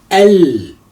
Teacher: you can hear both the a and the lam. And the jim is not carrying shadda. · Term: moon letter